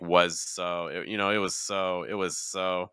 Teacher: I would start with a very slight z and then move into the voiceless. It's not was so.